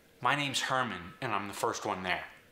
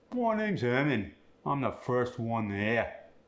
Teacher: the medial R gets the uh sound